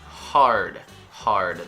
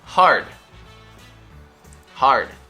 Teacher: a rounded ah hard hard hard something that you might experience when you hit that r the tip of your tongue kind of curls back a little bit